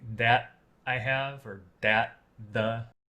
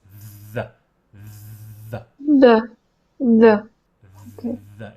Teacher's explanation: your tongue is going to stick out in front of your teeth like th. And then you're going to make a vibration sound. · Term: th sound